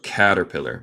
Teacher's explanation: Advice from a caterpillar. Recuerda, en el acento estadounidense, a veces decimos la T en el medio de palabra, más como R en español. So, caterpillar.